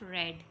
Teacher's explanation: And the other liquid sound is that of r, as it comes in the beginning of red. This sound is formed with the tongue tip raised and curled back near the post-alveolar ridge. The tip of the tongue rolls back to the alveolar position and the air stream flows from the center.